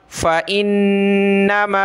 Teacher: حمزہ کو نون کے ساتھ ملایا، غنہ کیا